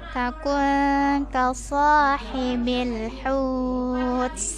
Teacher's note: ikhfa nun bertemu kaf dibaca samar